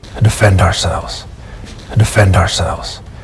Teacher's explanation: ourselves and the S at the end is voiced ourselves ourselves since these are all statements notice the downward intonation right at the end